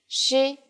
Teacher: in lesson two we mentioned the pronunciation of the consonant she it sounds like the s in English only with flatter lips